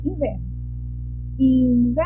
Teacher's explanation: A nossa sílaba tônica na palavra inverno é o ver.